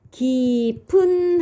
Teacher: 보이실까요 그렇죠 기 피읖까지가 어간이 되겠죠 형태소를 분석해 보면요 이렇게 되죠 모음으로 시작하는 형식 형태소가 오기 때문에 앞 어간의 마지막 소리가 요렇게 연음이 돼서 깊은 하고 소리가 나는 거예요